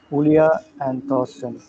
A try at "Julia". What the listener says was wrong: Yulia, not Julia. Yulia.